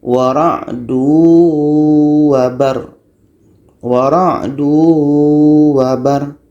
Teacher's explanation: Tanwin hilang menjadi masuk ke waw. Kalau kita baca seperti ini, wara'dun wabar, itu idgham belum jadi.